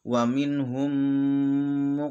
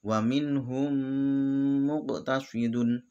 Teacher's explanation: juga bisa disebut sebagai Idgham Mimi dan bacanya juga harus mendengung